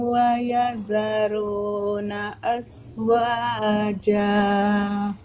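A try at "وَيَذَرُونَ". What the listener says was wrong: Baik, ulang dari wayadharu tapi bukan wayazaru. Pakai ujung ini tadi. Za.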